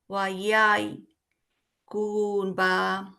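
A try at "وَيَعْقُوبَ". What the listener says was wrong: ইয়াই কেন ওটা তো আইন ইয়া ইয়া কুবা ইয়াকুবা ইয়া টান দিয়ে আরেকটা আয়ের সাথে যুক্ত হবে ইয়া ইয়া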